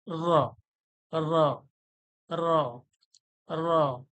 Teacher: টক্কর খাবে না একবারেই টক্কর খাবে র র র র র র টা যে বলবেন জীবের আগালের যে উল্টো পিঠটা সামনের উপরের দাঁতের যে মাড়ি রয়েছে সেই মাড়ির কাছে একবারই লাগবে